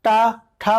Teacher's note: और इसके बाद जो आप टा वाली लाइन बोलते हो टा ठा, तो इसका मतलब उच्चारण स्थान मूर्धा है। तो जब जैसे आप टा ठा बोलते हो जिह्वा आपकी ऊपर बिल्कुल छू जाती है मूर्धा को, तो इसीलिए इसको अभी क्या बनेगा, उच्चारण स्थान मूर्धा।